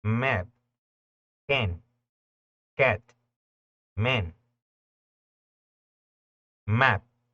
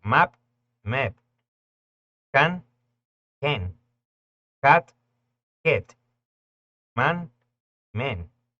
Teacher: Nosotros decimos A porque abrimos la boca y lo emanamos pues, de ahí, de la boca. Ese sonido para palabras donde la vocal A es la única vocal, suena entre una A y una E.